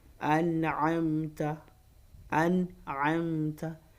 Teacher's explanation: No nasalization, just pronounce your nun sakina with clarity and you move on.